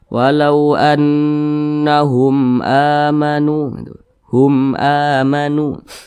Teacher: ba bukan huruf mim maka semua hukumnya namanya adalah izhar syafawi karena dia izhar maka dibaca jelas tidak berdengung wau anahum amanu Hum amanu dibaca pendek jangan didengungkan seperti ini